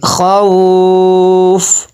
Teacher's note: فا کو ساکن کیا ہے، یہاں پہ یہ جو مد کیا ہے مد لین عارض ہے